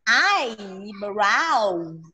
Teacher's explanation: Nó trọng âm rơi vào âm đầu tiên. Lá là sẽ là eyebrow.